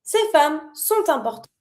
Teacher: Pronounce the T with the important.